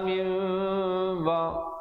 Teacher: Bayyinati wal huda min, iqlab di situ, nun mati bertemu ba, nun bunyi nun ditukarkan kepada bunyi mim yang nipis 2 harakat